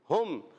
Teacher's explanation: ہا کا مخرج حلق کے نیچے والے حصے سے یہ ہا ادا ہوتا ہے.